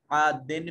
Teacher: आदिन में दाल के नीचे तनवीन और इसके बाद फा हरूफ इख्फा में से यहाँ इख्फा हो रहा है।